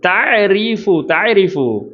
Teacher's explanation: ரா தஃப்ஹீமா தர்க்கீக்காக மெல்லினமாக ஓதணும்.